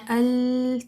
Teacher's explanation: ادنى الحافہ میں طرف اللسان بھی ایڈ ہوتا ہے اور ہمارے جو دانت ہیں ضاحک جو کہ پری مولرز کہلاتے ہیں، ایک طرف کے ضاحک سے لے کے دوسری طرف کے ضاحک کے جو مسوڑے ہیں جو ہمارے گمز ہیں ان کے ساتھ ہماری زبان کا فرنٹ والا حصہ لگتا ہے اور وہاں سے لام کی ادائیگی ہوتی ہے · جو ادنى الحافہ ہے زبان کا آگے والا کنارہ، وہاں سے لام کی ادائیگی کی جاتی ہے